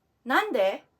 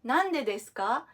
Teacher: with a rising intonation kasi question siya